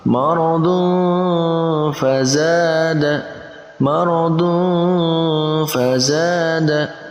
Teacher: maka dibaca dengan digabungkan antara keduanya, antara tanwin dan fa, dan kita tambahkan ang. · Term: ikhfa